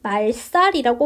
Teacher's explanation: 모든 것을 말살시키겠다 할 때 말살이라고 발음하고요. 여기서 앞에 있는 한자어이면서 앞에 있는 리을 때문에 살이 쌀이 됐습니다. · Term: 된소리